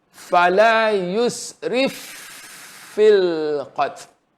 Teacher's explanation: Masuk fa mati kepada fa yang hidup. Tak diasingkan.